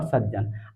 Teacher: ता का मेल चाहे जा से हो या झा से हो, किंतु भाई आधे जा में ही परिवर्तित होता है